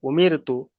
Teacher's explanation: যেমন এখানে হামজা পেশ উ, মিম রজের মির, উমির, তা পেশ তু, উমির তু, তাহলে এখানে কিন্তু বারিক করে পড়ছে, এখানে কিন্তু আর পুর হবে না। র সাকিনের পূর্বে জের এসছে, তাই এখানে র সাকিনটাকে আর পুর করে পড়া যাবে না